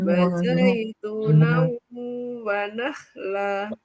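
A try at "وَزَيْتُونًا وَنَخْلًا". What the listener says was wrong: Sebentar, tu-nya panjang.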